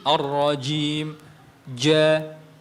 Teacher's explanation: Maksudnya adalah rapatnya dua sisi makhraj. Jadi makhraj huruf jim ada di tengah lidah bertemu dengan langit-langit. Nah, pertemuan antara keduanya ini rapat. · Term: syiddah